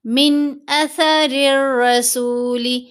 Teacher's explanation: اظہار جب کیا جاتا ہے تو نون کی آواز کو ظاہر کر کے پڑھا جاتا ہے اور جلدی پڑھا جاتا ہے، من یہ نہیں کرنا، یعنی اظہار میں غنہ نہیں ہوتا، من اثر الرسول۔